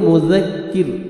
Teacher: ذال کو نرمی سے ادا کریں گے اور کاف کو باریک پڑھیں گے